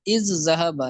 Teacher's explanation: اور از ذہب، یہ دو کلمے میں، از الگ کلمہ ہے، ذہب الگ کلمہ ہے، ٹھیک ہے، تو اصل میں یہ تھا از ذہب، لیکن ادغام ہوا، پہلا ساکن ہے دوسرا متحرک ہے، تو پہلے کو دوسرے میں داخل کیا، پہلے کا دوسرے میں ادغام کیا، تو یہ از ذہب ہو گیا۔